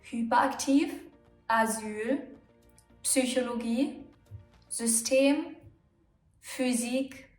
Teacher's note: when the Y appears in the middle of a word, it's going to be an Ü